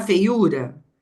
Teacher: se eu tô aqui na feiura a sílaba tônica tá no u